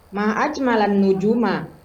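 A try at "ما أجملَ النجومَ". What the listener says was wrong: Ulang lagi intonasinya. Masih tanggung gitu. Ulang coba.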